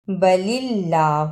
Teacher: اللہ سے پہلے زیر آیا ہے، اس لیے اس اللہ کو نرم زبان سے پڑھنا ہے